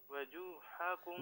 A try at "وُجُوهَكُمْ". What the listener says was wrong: واو پر پیش ہے وُجُوهَكُمْ نہیں وجو نہیں وجو